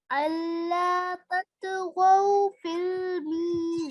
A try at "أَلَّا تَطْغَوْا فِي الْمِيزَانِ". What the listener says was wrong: 2 seconds. I haven't heard the 2 seconds.